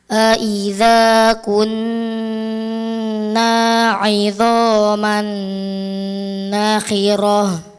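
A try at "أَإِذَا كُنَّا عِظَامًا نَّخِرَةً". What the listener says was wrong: Ini baru dha, tebalkan. Idhama, dha.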